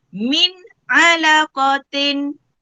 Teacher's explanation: Okey, nun mati bertemu dengan huruf ain, maka hukumnya adalah izhar halki. Hukum dia adalah izhar halki, mesti dibaca dengan terang dan jelas, tanpa dengung.